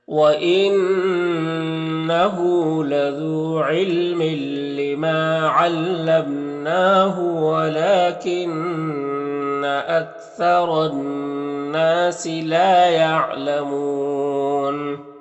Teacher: نون مشدد غنہ ہوگا، نون کے آواز کو ناک میں لے جا کر گنگنائیں گے، ایک الف کی مقدار۔